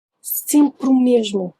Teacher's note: Since we don't pronounce final E's, it's just easier to marry that word to the next one when it starts with a vowel.